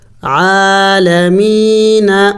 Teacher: جب حرکت نہیں ہے تو نہیں پڑھیں گے، لام لام کے ساتھ ملائیں گے، عین زبر ع، لام لام زبر لل، علل، عین کڑی زبر ع، لام زبر ل، علل عال، میم یا زیر می، یا مدہ ہے، اس کو تھوڑا سا لمبا کیا جائے گا، ایک الف کے مقدار، نون زبر ن، عالمین۔